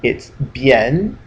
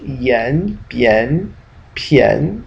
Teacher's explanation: you really want to say yen. It's kind of a little bit more like an E.